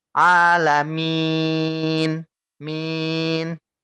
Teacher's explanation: maka panjangnya enggak dua tapi harus dilebihkan ya dilebihkan satu atau dua Alif jadi panjangnya tiga atau empat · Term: mad arukun, Mad arid lis sukun